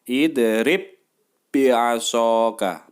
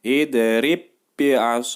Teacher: huruf ba' yang sama Sukun dan huruf ba' yang kedua tasydid itu dijadikan satu lalu ditekan ke huruf yang bertanda tasydid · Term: Idgham Mutamatsilain